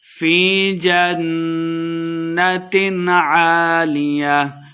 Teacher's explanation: فی یہ مد ہے 2 حرکات لمبا کر کے پڑھیں گے